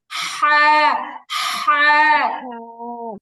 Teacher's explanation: গলার মাঝখানের দিকে হালকা চাপ লাগবে। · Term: বড় হা